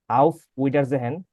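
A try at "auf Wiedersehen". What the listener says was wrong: ভিডার, উইডা না,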